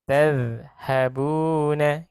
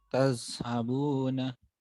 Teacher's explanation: Ketemukan gigi atasnya tanpa udara. Nggak boleh ada S-nya.